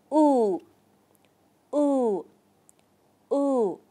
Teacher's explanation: chúng ta sẽ tròn môi ở môi trên hơi cong lên một chút và môi dưới hơi trễ xuống một chút với lưỡi thì chúng ta để sâu phía trong vòm miệng · lên một chút và môi dưới hơi trễ xuống một chút với lưỡi thì chúng ta để sâu phía trong vòm miệng và sau đó chúng ta phát âm nguyên âm u như bình thường